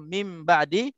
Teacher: Tak ada harakat. Apabila nun bertemu dengan ba, suara berubah menjadi mim. · nun mati bertemu dengan ba, hukumnya iqlab, dengung 2 harakat.